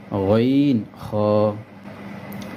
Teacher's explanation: তিন নাম্বার মাখরাজ হলকের শেষ হইতে গাইন খ